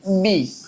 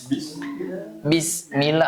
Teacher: Ba itu termasuk yang mempunyai sifat syiddah kuat ya. Jadi bacanya bi gitu ya.